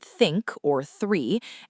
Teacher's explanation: You have to place the tip of your tongue, just the very tip, gently between your upper and lower front teeth or just behind them, and then push air through that narrow gap. For the voiceless th, you push air without any vibration in your vocal cords.